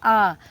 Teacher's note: केवल एक ही स्वर ऐसे आते हैं जो हमारे विवृत में होते हैं, जैसे आ। आप आ को बोलें तो आपको पता चलेगा कि आ हमारा क्या है, मुख पूरा खुल जाता आ को बोलने में